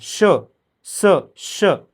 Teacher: मुखावाटे जोराने उसासा बाहेर टाकल्याप्रमाणे ज्यांचा उच्चार होतो त्याला उष्मन म्हटलं जातं इथं घर्षण होतं श बघा बोलून बघा श स श थोड घासल्यासारखा तुम्हाला फील